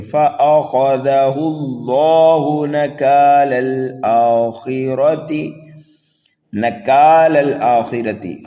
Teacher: خا کو پر پڑھنا ہے، را کو پر پڑھنا ہے، تا کو جلدی پڑھنا ہے · یہاں پر لام اللہ کو پر کر کے پڑھیں گے، ہا کو جلدی پڑھیں گے۔